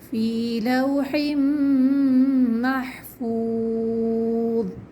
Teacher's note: فی لوح محفوظ، ٹھیک ہے، آخر میں جو ہے واو مدہ ہے، یہاں پر محفوظ میں واو ساکن سے پہلے پیش ہے، اس کو بھی ہمیں 2 کاؤنٹس کھینچنا ہے